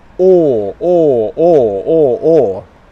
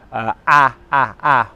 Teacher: or or my lips are rounded or or or or or the sound comes in the back of my mouth or or or that would be compared to ah ah ah where it comes from the front of my mouth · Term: aw sound